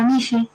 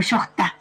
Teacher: SH, una fricativa sorda, como la fricativa del inglés.